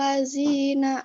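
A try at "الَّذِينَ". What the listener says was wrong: Itu masih bergesekan kamu. Ini kayaknya bukan bergesekan, malah kamu belum keluar. Lidahnya udah keluar belum?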